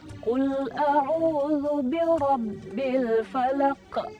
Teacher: Itu kesalahannya adalah ketika membaca qul a'udzu birabbil falaq, menambahkan huruf hamzah setelah kita membaca qalqalah